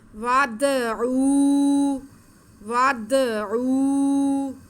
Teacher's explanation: مم مثلہ وادعوا، واو پر زبر ہے، واو آگے دال ساکن ہے، دال حروف قلقلہ میں سے ہے، تو اس کے بعد کو ہم تھوڑا ہلا کے پڑھیں گے، واو کو دال کے ساتھ ملا لیں گے. ود ود، آگے عین پہ پیش واو ساکن، یہ واو مدہ ہے، اس کو ہم کھینچیں گے